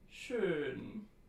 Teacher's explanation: This is the long mid-front rounded tense vowel as in schön. It is the rounded counterpart to a as in gehen.